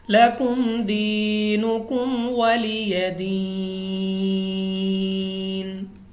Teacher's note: یا ساکن سے پہلے زیر یا مدہ، یعنی 2 الف تک کھینچ کر پڑھیں گے